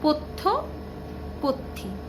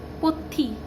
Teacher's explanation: ই আসছে, শেষে স্বরধ্বনির আগম ঘটছে। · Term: অন্তস্বরাগম